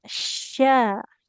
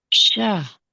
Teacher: Kemudian tadi huruf shin, syahru. Nah, huruf shin tengah lidah menempel ke langit-langit